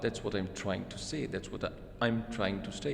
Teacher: full form is am, and the weak form is just the m.